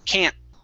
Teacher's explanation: My tongue goes up to the top and it stops. That is called what's called a stop T.